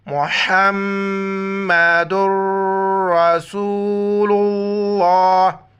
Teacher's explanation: لفظ اللہ سے پہلے پیش آ جائے، موٹا پڑھیں گے